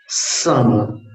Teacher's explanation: ये दंत स कहलाता है। तो जीभ को दांत के पास लाना अनिवार्य है